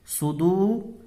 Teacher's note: صدو یہاں پر واو مدہ ہوگا، واو ساکن سے پہلے دال کے اوپر پیش ہے تو اس کو ایک الف کے برابر کھینچ کر کے پڑھیں گے